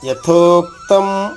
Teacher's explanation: యతోక్తం తో పైన ఆఘాత ఉంది దాని తర్వాత క ఉంది కదా క రెండు కాలు అవుతుంది